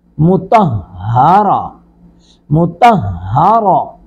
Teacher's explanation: میم پیشمو، طا زبر ہا طہ، ہا زبر ہا، را زبر را، مطہرہ۔ یہ ہا کو ہم حلق کے آخری حصے سے نکالیں گے، ہا کی طرح نہیں، مطہرہ، مطہرہ، تا دو زیر تن، مطہرۃ۔